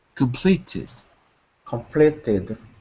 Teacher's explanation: So after a T, the past tense sounds like tid.